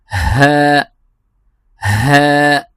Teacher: حرف ہا کو ہم اقصی حلق، جو بالکل حلق کا جو نچلا حصہ ہے جو سینے کے قریب ہے، وہاں سے ہم اس کو ادا کریں گے۔ ہم پڑھیں گے ہا، ہا، جس طرح انگلش میں ایچ کی آواز ہے ہی، یا ہم کہتے ہیں کہ ہاؤ آر یو، تو ہم ہا کی آواز نکالیں گے، ہا، ایچ کی۔